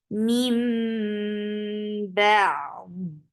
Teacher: this is iqlab. So you're changing the sound of noon into mim. That is why it is called iqlab.